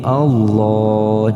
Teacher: harokat ketika dalam lafadz Allah ada dua bentuk nanti ketika dibaca ketika harokat sebelumnya itu fakta maka kita baca tafkhim artinya tebal